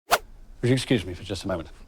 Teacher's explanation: the words he stresses are, would you excuse me for just a moment? So it's excuse, just, and moment.